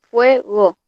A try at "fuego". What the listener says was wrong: Perfecto, 2 sílabas, ya.